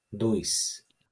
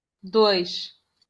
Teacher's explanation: El sonido de la S al final o el sonido de la SH. En Brasil va a sonar siempre S.